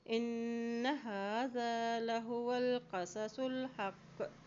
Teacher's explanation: یہاں نون پہ شد ہے تو یہاں پہ غنہ ادا کرتے ہوئے پڑھیں